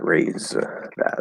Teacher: If you go from Z voiced TH, the Z will basically take over the TH sound. It doesn't have to, but it's a common thing that happens, especially in fast speech. · So, and it was specifically, we were talking about like raised that and how the D might kind of just disappear